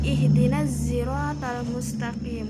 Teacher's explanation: pada ayat yang ke-6 bacaan as-sirata sod menjadi zai, jadi bacanya ihdinaz siratal mustaqim.